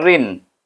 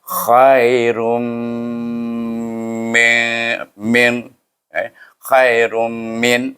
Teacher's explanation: Yang ini tanwin bertemu dengan mim. Jadi kita kena baca dengan idgham ma'al gunnah, iaitu memasukkan huruf ra kepada huruf mim dengan gunnah.